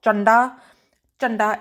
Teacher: the nasally n sound there is found in the middle